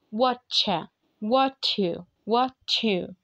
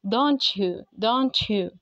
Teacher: t لما يجي بعديها sound يا يا يا هعمل ايه؟ هعمل ch sound